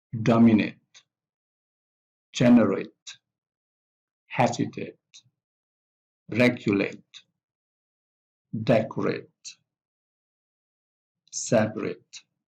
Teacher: So the stress of these words with ate is on the first syllable. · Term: primary stress